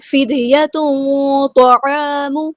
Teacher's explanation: لمبا کرنا ہے، ہاں سمپل ادا کرنا ہے، فِدْيَةٌ طَعَامُ مِسْكِين، دال ساکن ہے تو یہاں پہ قلقلہ ہوگا، آواز کو ہلائیں گے